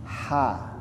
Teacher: Ha keluarnya dari kerongkongan. Ha, pangkal tenggorokan ya. Ha, seperti orang kepedasan. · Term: huruf ha